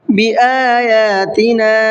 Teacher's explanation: یہاں پر مد منفصل کا قاعدہ ہے 1 سے 3 الف کی برابر کھینچ کر کے پڑھنا ہے